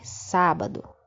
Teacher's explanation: Quando eu pronuncio sábado, o sá sai com mais força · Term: sílaba forte